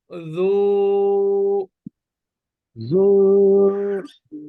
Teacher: জু টা পাতলা হবে জালটা শক্ত করা যাবে না